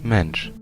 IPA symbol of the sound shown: ʃ